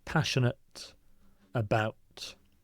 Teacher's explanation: So the I you don't really pronounce passionate about.